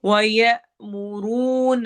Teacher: हमजा पे झटका देंगे और मुरू वाव मद्दा